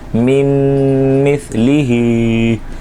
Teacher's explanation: میم مثلی ہی نون کی آواز نہیں آئے گی بلکہ میم اور میم کے ملنے کی آواز آئے گی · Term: ادغام مع الغنہ